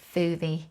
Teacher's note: she tends to use the F sound in words that start with an S blend. So if instead of saying smoothie, she'll say foovie, and instead of swing, she'll say thing.